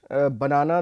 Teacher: banana, the stress is on the second syllable. You can see the stress marker is on the second syllable here.